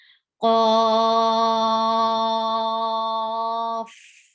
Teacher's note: there will be hums at the last letter because it's fa, and whenever fa is with sukoon, it gets hums